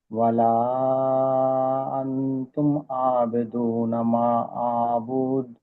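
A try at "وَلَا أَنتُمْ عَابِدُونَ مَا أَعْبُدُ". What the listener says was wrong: ఇక్కడ 4-5 హరకాతులు దీర్ఘం తీస్తే మంచిది. 2 తీసినా పర్లేదు. మీరు చదివింది తప్పు కాదు.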